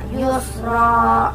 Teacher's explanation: Yang ketiga adalah mat iwad karena ro berharokat fathah tanwin dan diwaqaf. Cara membacanya tanwin dihilangkan dan panjangnya 2 harokat